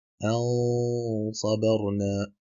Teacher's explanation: Et puisque ces lettres-là ont une emphase, elles sont graves, donc il s'agira d'effectuer la runna avec une intonation emphatique